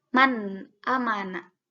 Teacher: nun mati bertemu dengan alif maka harus dibaca jelas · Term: izhar